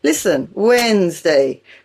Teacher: The middle D and the middle E are silent in Wednesday. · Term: silent letters